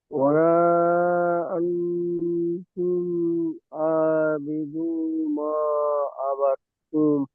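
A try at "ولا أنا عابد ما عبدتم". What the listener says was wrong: ওয়ালা আনতুম হবে না, ওয়ালা আনা আবিদুম। আন হবে না, আনা, হামজা আ নুন জবর না, ওয়ালা আনা আবিদুম মা আবাদতুম।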